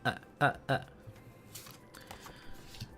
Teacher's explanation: It's like a a lazy vowel, I would describe it. It's like another one, the schwah, but like higher up the uh It's just it's just an uh sound.